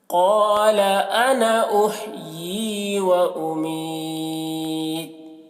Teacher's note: یہاں پر جب وقف کریں گے تو اس بات کا خیال رکھنا ہے کہ یہاں پر تا میں قلقلہ نہ ہونے پائے، کیونکہ تا میں قلقلہ حروف قلقلہ میں سے نہیں ہے، اس وجہ سے قلقلہ یہاں پر نہیں ہونا چاہیے.